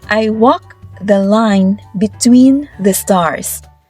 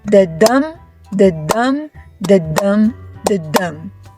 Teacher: This is when the pattern goes dum dum. Unstressed then stressed like a heartbeat. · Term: yamic meter, iambic meter